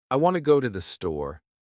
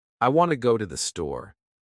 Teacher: The words want, go, and store are stressed. The other words I, to, and the are much faster and softer. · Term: stresstimed language, stress-timed language